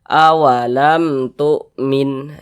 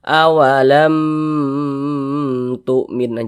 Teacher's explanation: syafawi maka dibaca jelas tak berdengung baca pendek saja awalam Tumin Jangan dibaca awalam tuminah jangan dipanjangkan begitu jangan pendek saja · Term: izhar syafawi